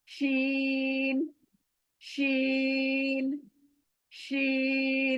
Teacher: जहां से जीम निकलता है वहां से शीन भी निकलता है, यानी जबान का बीच का हिस्सा, और ऊपर का तालू, ऊपर तालू को लगने से शीन, शीन अदा होता है।